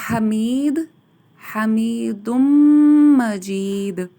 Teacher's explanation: ہا کو باریک ادا کیا جائے گا حلق کے وسط سے